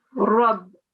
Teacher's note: It's a round mouth again because the ra is carrying a fatha and that's a thick ra, will be pronounced with a round mouth